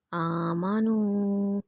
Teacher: حروف مدہ 1 فنگر کے برابر لمبا کریں گے۔